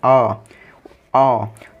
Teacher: जब आ बोलेंगे हम आ तो मुंह और नाक से हवा निकलेगी, तो ये होता है अनुनासिक